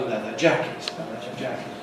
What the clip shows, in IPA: ˌleðə ˈʤækɪt